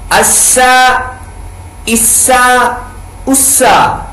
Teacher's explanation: سین پڑھتے ہوئے سیٹی کی آواز نکالنی ہے کیونکہ سین حروف صفیریہ میں سے ہے